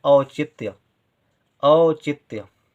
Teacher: औचित आधा ता बहुत कम देर के लिए उच्चारित हो रहा है। य औचित्य।